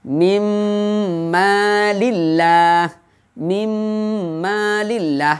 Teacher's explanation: Seakan-akan di mim yang kedua itu terdapat tasydid. Itu bacaan idgham bi gunnah.